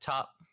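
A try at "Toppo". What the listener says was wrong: No, it's Topo. It's not Top. The only character that's allowed to have one syllable in his name is Hit, okay?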